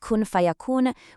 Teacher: And in "kun fayakun", we see a different rule called ikhfa, where the n sound is kind of softened or hidden right before the fa, which perfectly prepares your mouth for that next letter.